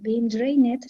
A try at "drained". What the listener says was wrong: drained remember not draining drained